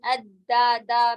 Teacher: دال میں بھی دا دا میں آواز ہے، کوئی ہوا جیسی چیز نہیں ہے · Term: جہر